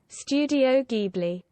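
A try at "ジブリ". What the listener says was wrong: No, still a hard G noise. Hard G.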